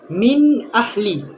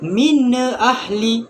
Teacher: Yang kedua, dibacakan izhar halki tanpa dengung. Kita hendaklah membacakan tanpa dengung,